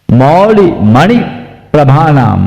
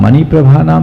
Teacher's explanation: मौली मणि प्रभानाम, मणि प्रभानाम नहीं, प्र आ गया तो उसके पहले जो वर्ण है उस पर जोर देना।